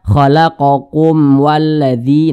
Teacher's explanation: adalah izhar syafawi bacanya tidak didingungkan pokoknya bacaan izhar itu teman-teman bacaan izhar itu dia tidak didengungkan tidak didengungkan jelas bacanya